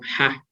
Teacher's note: the sound not very different from a whisper vowel · it is called a voiceless glottal fricative. Thì nó được xem như là một cái âm sắc thanh môn vô thanh.